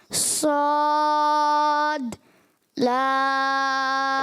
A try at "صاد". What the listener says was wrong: اچھا صاد کو آپ نے موٹا کرنا ہے. صاد اس کا الف بھی جو ہے نا اس کا الف بھی موٹا کرنا ہے.